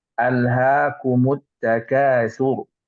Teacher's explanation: Ini lebih tebal karena sebelum huruf ra itu di belakangnya ada huruf dhammah ya.